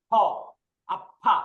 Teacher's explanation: প্রথমে থাকলে এইটা ফ, ফ উচ্চারণ করতে দুইটা ঠোঁট একসাথে লাগিয়ে উচ্চারণ করবো ফ, দুই ঠোঁট ফাঁকা রেখে ফ বলবো না, ফ এরকম না, ফ আফা।